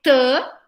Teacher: é a mesma boquinha do D, só que não tem vibração de prega vocal